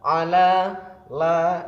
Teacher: Kemudian rabbikum ala, ala la di sini terdapat hukum bacaan mad tabi'i, karena ada lam berharokat fathah panjang, dibaca panjang 2 harokat atau 2 ketukan